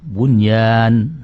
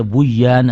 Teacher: kalau nanti bunyan dibaca Buyan nanti hilang asal asal usul dari huruf kalimat itu menjadi hilang nunnya hilang